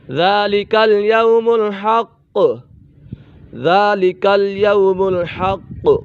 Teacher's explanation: قاف کے اوپر قلقلہ ہو رہا ہے